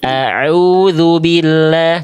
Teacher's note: A'u dari tengah tenggorokan. Ngeden lagi sedikit. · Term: ain